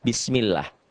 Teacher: Dibaca tipis berbunyi A. Tarkik ya, bukan tebel.